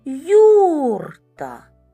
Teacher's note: наголос припадає на перший голосний звук